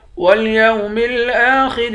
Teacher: حمزے کے اوپر کھڑا زبر ہے، اس کو بھی ایک الف کے برابر کھینچیں گے، خا کو موٹا پڑھیں گے۔